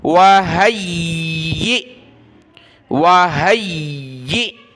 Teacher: اور اسی کے ساتھ ہم نے جب یا کو حمزہ ساکنہ کے ساتھ ملایا تو حمزہ ساکنہ کو ہم نے یہاں جھٹکے کے ساتھ پڑھنا ہے